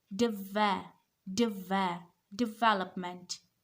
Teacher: The stress is not on third syllable. The stress is on second syllable.